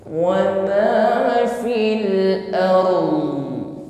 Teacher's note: panjangnya seimbang yang pertama di sini sempurnakan sifat ro terlebih dahulu ro sukun sebelumnya ada fathah maka getarkan dengan getaran yang tafkhim tebal · menutup pada makhraj mod, yaitu lidah bagian samping nempel pada gigi geraham bagian atas.